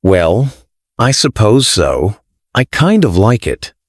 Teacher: Falling rising intonation. Your voice falls and then rises. Used to show hesitation, doubt, or politeness.